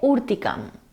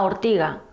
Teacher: evoluciona a ortiga la vocal o átona pasa a o luego hay una sonorización de la oclusiva velar sorda ce que pasa a la correspondiente sonora g y la caída final de la m es decir la apócope